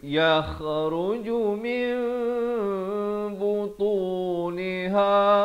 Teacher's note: kena tukar daripada bunyi nun kepada bunyi mim, daripada min jadi mim.